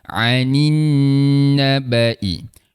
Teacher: Ain tengah rongga kerongkong. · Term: huruf Ain